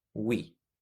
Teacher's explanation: No se dice we, se dice we con i. En este caso la e se pronuncia como una i.